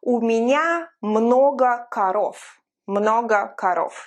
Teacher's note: the voiced V from korova became devoiced when I say korov, because you remember it's at the end of a word.